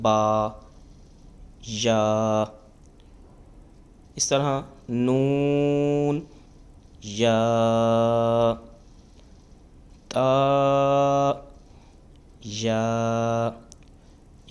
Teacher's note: یا کا مخرج ہے یہ جو ہوتا ہے زبان کا درمیان اور تالو کا درمیان